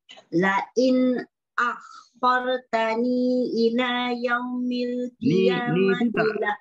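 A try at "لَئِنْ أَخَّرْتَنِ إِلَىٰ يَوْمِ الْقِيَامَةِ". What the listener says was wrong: Ni tu tak ada mat. Tak boleh nak panjangkan lah. Jadi ni tu tashengo.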